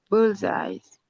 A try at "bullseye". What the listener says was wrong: Bullseye. No, not S at the end. Bullseye.